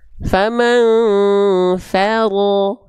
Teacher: Nah, fa-nya tipis, ro-nya tebal.